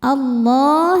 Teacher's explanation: lam jalalah dibaca tafhim karena sebelumnya fathah maka lam dibaca tebal